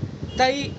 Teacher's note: زبان کا بیچ اور اس کے مقابل اوپر کا تالو، یہ یائلین کا مخرج ہے